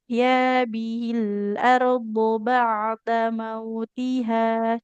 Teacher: Nah, ba'da mautiha. Huruf ainnya tawasud. Harus ada aliran suaranya sedikit ya.